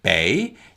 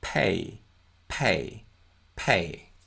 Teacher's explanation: say the word pay with a p sound then you will feel heavy aspiration a big puff of l on your hand as you say